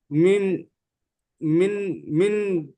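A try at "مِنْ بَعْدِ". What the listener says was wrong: এই নুন সাকিন আর পড়া হবে না, এই মিমকে পড়তে হবে, মিম, মিম সাকিন পড়তে হবে, মিম বাদি, মিম বাদি।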